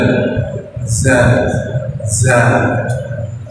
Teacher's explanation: Orang Mesir mengatakan orang mengucapkan zat, pojok lidahnya harus kelihatan dari depan.